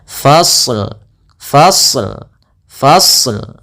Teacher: kita Fa ketemu dengan Shad shadnya tebal